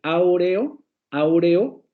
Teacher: tenemos una vocal semicerrada anterior y luego una semi cerrada posterior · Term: hiato